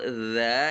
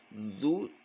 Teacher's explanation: Padahal kalau za itu hampir semuanya nempel ya, za enteng saja. Tapi gara-gara mencucu, zu jadi kaku. Akibatnya seperti terdengar isti'la.